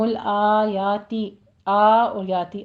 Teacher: آ یا دونوں کو 2 کاؤنٹ کرنا ہے